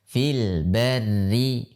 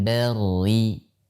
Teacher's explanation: Walaupun sebelumnya adalah fathah, maka dia harus dibaca tipis karena dia sendiri dalam keadaan kasrah. Jadi dibaca fil barri, bukan barri.